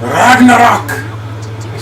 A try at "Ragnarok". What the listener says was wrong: See, you're rolling the R's or something like that. Ragnarok. Nah. Ragnarok? But you say it like some sort of fucking Viking. Yeah, you do. You say it like in a really pissed off way instead of a